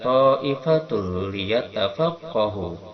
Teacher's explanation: memasukkan tanwin doma pada lam tanpa disertai dengungan. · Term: idgham bila gunnah